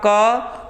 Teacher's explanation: आपके हथेली पे मुख से निकलने वाली हवा बहुत कम लग रही है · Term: अल्प प्राण